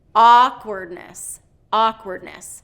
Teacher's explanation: instead of second syllable stress we want first syllable stress awkwardness awkwardness so when we're stressing we're pronouncing it higher louder